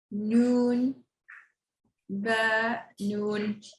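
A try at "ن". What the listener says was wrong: Okay, very good. Good job, guys.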